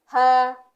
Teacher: Ya, huruf H besar ada 2 bentuknya ya, H besar biasa dan ada H domir. Makhrajnya sama seperti huruf hamzah, ada di tenggorokan bawah. Dan cara bacanya seperti Latin di huruf Indonesia itu huruf H, H pada umumnya.